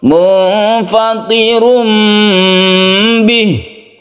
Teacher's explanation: iqlab itu membalik suaranya dari tanwin atau Nun menjadi mim mati